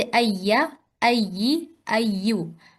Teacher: तशदीद जो है ना, इस पर थोड़ा सा टाइम देना होता है ताकि ये थोड़ी सी वाज़ेह भी हो